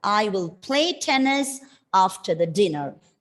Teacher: we are pronouncing the doubling of the consonant as one